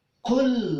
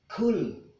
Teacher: Ingat, ini adalah huruf qaf, bukan huruf kaf. Maka ada di tengah-tengah tenggorokan. Qul. Ya, kalau kalian mengucapkan dengan huruf kaf berarti kul, ya, maka di sini surah Al-Kafirun diawal dengan huruf qaf.